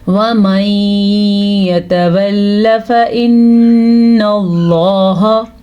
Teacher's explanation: یہاں پہ ادغام بالغنہ کا قاعدہ ہے، نون ساکن کے بعد یا آیا ہوا ہے تو ادغام بالغنہ، یعنی ادغام کا مطلب ہے ان دونوں کو ہم آپس میں ملا دیں گے اور بالغنہ غنے کے ساتھ پڑھیں گے۔ ایسا تب ہوتا ہے جب نون ساکن کے بعد یا تنوین کے بعد یا میم واو نون ان چاروں میں سے کوئی سا بھی حرف آ جائے تو پھر غنہ لازمی ہوتا ہے اور ملانا بھی لازمی ہوتا ہے۔